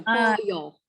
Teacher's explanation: The LL changes to a Y sound for us, like yo-yo.